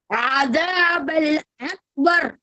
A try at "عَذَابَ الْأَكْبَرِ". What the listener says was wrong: அதாவது 2 பிழை நீ விட்டீங்க. ஒன்று ஐனை சரியா உச்சரிக்கல. இப்ப ஐன் வருது. அலிஃப ஏட சவுண்டுக்கு மாத்துங்க. காஃப கலக்கப்படாது. அக்பர்னு கலக்கப்படாது. அது பிழது. அஸாபல் அக்பர். பிழை. அக்பர் பிழை. அக்பர் என்று காஃப கலக்கப்படாது. அக்பர் என்று கலக்கிறதான் பொல. பெரிய போல. அக்பர்.